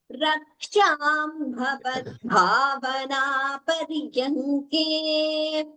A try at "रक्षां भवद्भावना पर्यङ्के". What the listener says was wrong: रक्षा भवद्भावना पर्यङ्के रक्षा भवद्भावना रक्षां भवद्भावना पर्यङ्के रक्षां भवद्भावना पर्यङ्के